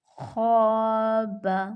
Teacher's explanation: خا موٹا حرف ہے، الف کو ہم موٹا پڑھیں گے